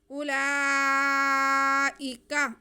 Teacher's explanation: اس واو کو ہم نے سائلنٹ کر دینا ہے، یہ واو نہیں پڑھا جائے گا۔ اگر اس پہ ساکن ہوتا، جزم ہوتا، جیسے یہ جزم ہے تو ہم اس کو کھینچ کے پڑھتے، لیکن یہاں پہ کوئی حرکت نہیں ہے، یہ واو سائلنٹ ہو جائے گی۔